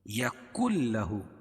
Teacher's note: یکن لہ یہاں ادغام بلا غنہ ہوگا، کیوں کہ قاعدہ ہے کہ نون ساکن یا تنوین کے بعد، نون ساکن یا تنوین کے بعد لام اور را آئے تو ادغام بلا غنہ ہوتا ہے. یہ نون ساکن کے بعد لام ہے، اس کو بلا غنہ یعنی ظاہر کر کے پڑھیں گے